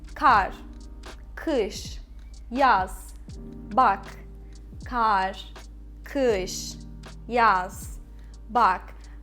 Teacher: The first one is the words which has only one syllable, which is monosyllabic words, they don't have the stress. They are unstressed.